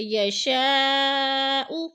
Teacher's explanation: 4 الفی مد ہے، 4 الف کے برابر ہم نے اس کو کھینچ کر پڑھنا ہے، لمبا کرنا ہے. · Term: مد متصل